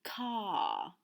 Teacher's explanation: in places like Reading, England, they don't pronounce the R.